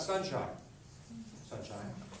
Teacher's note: sun has the accent